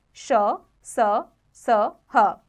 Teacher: जिन वर्णों के उच्चारण के समय मुंह से वायु तेज गति से रगड़ खाने के कारण गर्म निकलती है वे ऊष्म व्यंजन कहलाते हैं